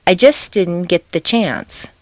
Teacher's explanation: the ending St of just and the beginning D of didn't are so near each other in the mouth